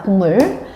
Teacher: 기억과 미음이 만났는데 여기서 미음이라는 비음을 만나서 기억이 그 라인의 비음으로 바뀌는 거죠. 기억의 비음이 뭐라고 밑에 있는게 이응이었잖아.